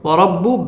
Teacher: ওয়াও ঠোঁট গোল করিয়া র পুর হবে